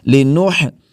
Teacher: ہا کو حلق کے درمیانی حصے سے ادا کریں گے